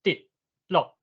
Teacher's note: 南部的第八调像讲这滴甲落拢是较悬的降落高降的音